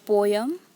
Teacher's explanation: Here po is stressed and yum is unstressed.